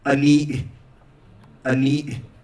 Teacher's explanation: So the word for face, the A in Navajo is closer, is more centralized